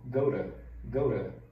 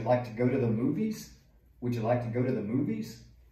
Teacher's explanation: quando a letra T é entre os sons de dois vogais, ela vira esse som de R